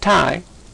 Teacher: If you put your hand on your throat when you say tie, you should not feel any vibrations. If you do feel a vibration, practice until you do not feel one, saying tie, as in tiger.